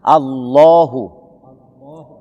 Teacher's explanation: didahului oleh fathah, maka nama Allah ini menjadi tebal.